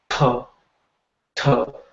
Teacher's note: the aspirated consonants, they're coming up with the flow of air. You're throwing a lot of air when you're saying it.